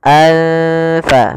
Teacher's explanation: maka cara membacanya samarkan tanwinnya kepada huruf Fa anfa makhraj daripada Fa adalah gigi atas menempel dengan bibir bawah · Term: Ikhfa